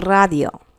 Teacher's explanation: at the beginning of a word it gets trilled or rolled